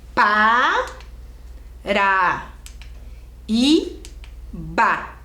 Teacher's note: o i fica sozinho é isso mesmo mas ele é o mais forte é a sílaba tônica